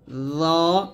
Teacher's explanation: দ টা হলে জিহ্বার আগা সামনের উপরে দুই দাঁতের আগার সঙ্গে লাগবে